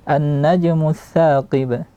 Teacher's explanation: nun di sini berharakat, dia bertasydid, maka dia akmal, dia lama durasinya. Alirkan bunyi di hidung. Kemudian najmu, sering terjadi kesalahan di jim yang sukun ketika mengqalqalahkan dia.